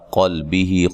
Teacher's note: قلبہ قاف کو موٹا ادا کرنا، لام کو ہلانا نہیں ہے